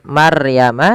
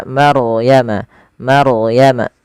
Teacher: ronya dibaca dengan tebal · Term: ro tafkhim